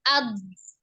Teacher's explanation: Ada sifat istitolah memanjang ditekanin.